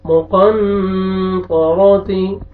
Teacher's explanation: نون ساکن کے بعد طا ہے اخفا را کو موٹا کریں گے